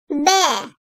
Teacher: İki dudağın birleşmesiyle çıkarılan B harfi ince seslidir. Türkçedeki B sesi gibidir.